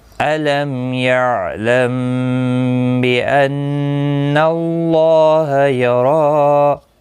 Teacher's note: ان نون مشدد پر غنہ ہوگا، اللہ کا لام اس زبر کی وجہ سے موٹا پڑھا جائے گا، پر پڑھا جائے گا، اس کے اوپر کھڑی زبر بھی ہے، ایک الف کی مقدار کے برابر کھینچ کر پڑھیں گے۔